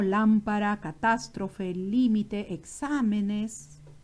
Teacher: presentan acento en la ante penúltima sílaba